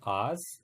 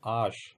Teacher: ये दंत्य सा है, ये तालव्य सा है